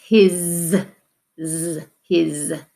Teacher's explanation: it's the S, but we're going to have the voice S